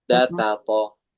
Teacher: Ujung lisan bertemu pangkal gigi seri atas